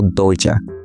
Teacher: Por outro lado, em Guarabira, dizemos doida, em que ocorre primeiro uma consoante oclusiva alveolar vozeada, mas depois pronunciamos como doja, sendo consoante africada, alvéolo palatal vozeada